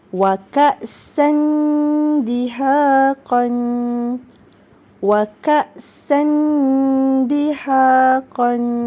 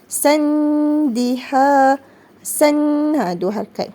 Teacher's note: Apabila tanwin baris di atas bertemu dengan huruf dal, hukum tajwidnya ialah ikhfa' hakiki dan kena baca dengung 2 harakat